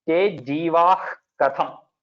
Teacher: And this visarga before ka, te jivah katham. It is almost like there is one H over there.